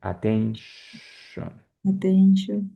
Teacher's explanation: Esa Tion, que es muy típica del inglés, es más suave, no tanto como chon, sino como cuando callas a alguien.